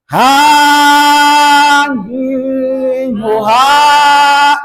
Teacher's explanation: Ha dari tenggorokan bagian bawah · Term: Ha besar